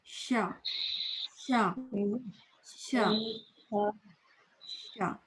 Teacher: زبان کی نوک نیچے رہے، نیچے، اور پھر شین ادا کریں. زبان کا جو مڈل کا حصہ ہے نا، درمیان کا، وہ خود بخود اوپر اٹھے گا. تو طریقہ یہ ہے کہ نیچے کی زبان، ٹپ آف دا ٹنگ، زبان کی نوک کو آگے چپکا لیں، پیچھے دانت نیچے، آگے والے دانت نیچے والے دانتوں کے پیچھے، اور پھر شین بولیں. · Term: تفشی